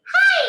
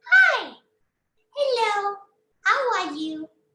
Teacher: A thin voice, a very thin voice. You have to really squeeze your vocal cords together and just say, this voice resonates in your head.